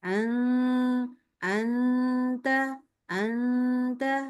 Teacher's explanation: jangan mikir Eng enggak boleh mikir Eng sama sekali mikirnya n ya